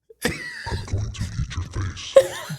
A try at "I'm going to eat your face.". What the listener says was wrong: But I feel like you got to say it more aggressively because that's how he does it.